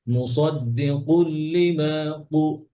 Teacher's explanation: মুসাদ্দিকু আরো পিছন থেকে, হ্যাঁ, যেন উপর নরম অংশ লাগে জিহ্বা।